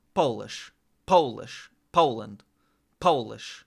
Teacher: the way they say the word Poland or Polish is like with a very strong accent on the Po